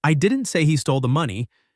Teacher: you're emphasizing that it wasn't you who said it